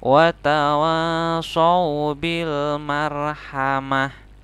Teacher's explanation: Jadi tidak marhamati tapi marhamah. Jadi ini ta-nya seperti huruf H yang disukunkan. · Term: ta marbutoh